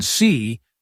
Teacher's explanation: for ee in see, your tongue is high and near the front of your mouth